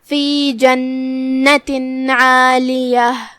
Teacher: آخری میں جو کہ ہم تاء مدورہ پہ رکیں گے تو اس پہ ہا سے رکیں گے